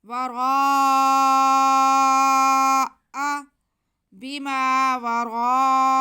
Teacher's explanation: را کی آواز کو ہم موٹا کرتے ہوئے 4 الف کے برابر کھینچیں گے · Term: مد متصل